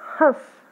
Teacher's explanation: तो यहाँ जो हमारी हंस में साउंड आई नाक से, और यहाँ जो हमारी आवाज आ रही है यानी उच्चारण हो रहा है वो हो रहा है हमारे नाक और मुंह दोनों से।